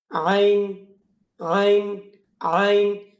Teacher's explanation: জানিয়ে দিই আপনাদেরকে আইন কোথায় থেকে উচ্চারণ হয়। হলকের মধ্যখান থেকে আইন এবং হা উচ্চারণ হয়